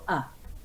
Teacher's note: the air comes from your throat and is released through your mouth so there's no blockage really at all the tongue stays low